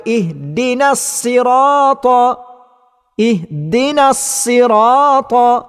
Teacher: huruf sad disebut dengan bacaan yang nipis maka walaupun pembaca mengatakan dia telah membaca dengan huruf sad tetapi